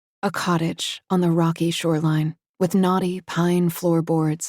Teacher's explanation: slightly breathy but very smooth and Incredibly clear